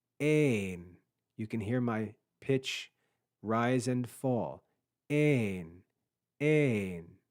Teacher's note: with a circumflex Accent on top that means we're going to rise and fall in pitch